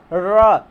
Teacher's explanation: तो आपकी जीभ जो है पीछे की तरह थोड़ा मुड़ जा रही है, मतलब लुढ़िया रही है, मतलब मुड़ रही है, पीछे की तरह मुड़ रही है, अर्थात यही हमारा लुंठित वर्ड हो जाएगा।